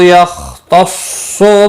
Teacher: یا خا مستعلیہ ہے، پر پڑھا جائے گا، اس پر کلکلا نہیں ہونا چاہیے، ہلانا نہیں۔ صاد مستعلیہ ہے، پر پڑھا جائے گا۔